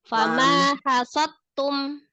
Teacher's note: Enggak langsung diidghamkan ke ta.